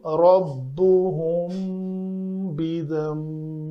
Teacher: یہاں میم ساکن کے بعد با ہے تو اخفاء شفوی ہوگا، 2 حرکت کے برابر ٹائم دیں گے